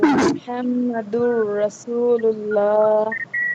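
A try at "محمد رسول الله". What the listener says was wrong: র মোটা হবে না, রসুল্লাহ কি হবে?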